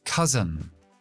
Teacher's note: Acentúa al principio. Dejo schwa en la segunda sílaba.